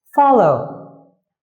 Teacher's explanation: Follow is a verb, but the word stress is on its first syllable.